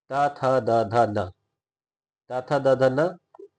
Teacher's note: दांत के बिल्कुल दांत के पीछे ही लगता है। ऊपर वाले दांत के एकदम जस्ट पीछे। तो इसका उच्चारण स्थान होता है दंत।